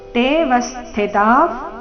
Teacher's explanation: ವಿಸರ್ಗದ ಉಚ್ಚಾರಣೆ ಅರ್ಧ ಫ್ ರೀತಿ